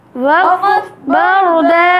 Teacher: را کو موٹا پڑھیں گے، را ساکن سے پہلے زبر ہے اور دو زبر کی تنوین کو وقف میں الف سے بدل دیں گے اور ایک الف کے برابر لمبا کریں گے.